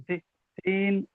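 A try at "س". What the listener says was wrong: একটু টান একটু দেবেন, সিন এখানে তিনালি পরিমাণ টান, একটু তিনালি পরিমাণ টেনে দেবেন।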